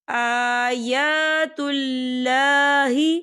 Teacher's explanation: آیا کھڑی حرکات ہے، تو ہم اسے 2 یا 3 حرکت کی برابر کھینچ کے پڑھیں گے